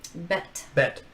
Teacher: you feel the air exploding from your lips when it's spoken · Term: plosive